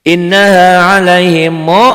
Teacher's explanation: 1 alif atau 2 ketukan. Ada panjangnya dan ada dengung ke hidung. Ada dengung ke hidung ya, karena ini gunnah.